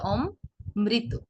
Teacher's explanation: আপনি যখন বলছেন অমৃত তখন ম 2 বার আসছে